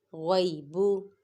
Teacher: غائن کو پر پڑھیں گے اور غائن پہ یالین اور با متحرک